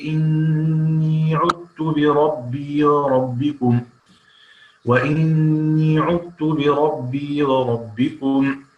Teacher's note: هذه الكلمات يدغم فيها الإمام الكسائي الذال في التاء